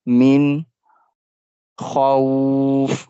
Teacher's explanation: we make kha sound longer because we are stopping on the fa.